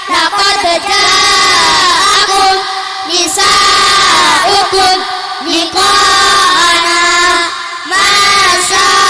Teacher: mad bertemu hamzah dalam 1 kalimat dan panjangnya 2,5 alif atau 5 harokat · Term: Mad wajib muttasil